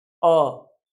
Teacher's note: इन स्वरों को उच्चारित करने में हमारे मुख आधा ही खुल रहा है। ऐसे को अर्ध विवृत।